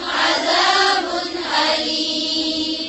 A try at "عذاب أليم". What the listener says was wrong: عذاب أليم. क्या हो रहा है यहाँ पर? इजहार या कलकला? कलकला भी कर रहे हैं. कलकला नहीं होगा लेकिन हो रहा है, ठीक है, तो ना करें.